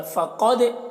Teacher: फ़क़द क़ाफ़ हुरूफ़ मुस्तालिया में से है, तो इन हुरूफ़ मुस्तालिया के हुरूफ़ को पूर्व पढ़ते हैं। दाल में कलकला करेंगे